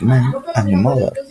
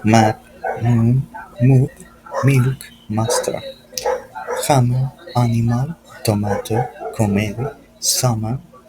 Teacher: The M is called a bilateral nasal, which means you produce it by bringing both lips together.